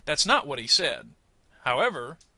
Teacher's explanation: I try to give a little pause but not a complete break